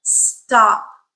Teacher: second sound in in this consonant cluster no aspiration